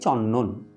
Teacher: চন্দন বানানে যে পূর্ব ব্যঞ্জন দন্তন্য তার প্রভাবে পরের ব্যঞ্জন দ দন্তন্যতে রূপান্তরিত হয়ে যাচ্ছে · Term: প্রগত সমীভবন